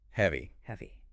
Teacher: Okay, the trick here is entirely in the final mouth shape. Heavy ends with a clear, long E sound. You literally pull your lips back into a smile.